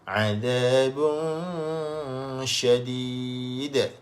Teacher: Huruf shin pastikan ada hamburan angin. Kerana shin ni antara sifatnya adalah tafashi.